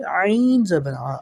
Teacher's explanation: زبر کے ساتھ الف ہے تو زال کو ہم یہاں پر لمبا پڑھیں گے۔